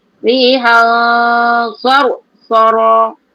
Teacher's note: bila huruf ifa tu tebal, sod, maka dengungnya pun jadi tebal